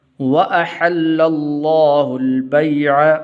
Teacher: واو کے بعد حمزہ ہے اور اس کے بعد پھر ہا ہے، تو آپ نے دونوں کو جو ہے علیحدہ علیحدہ پڑھنا ہے، حمزہ کو اور ہا کو، ایسے نہ ہو کہ ہا کو بھی آپ حمزہ پڑھنے لگ جائیں۔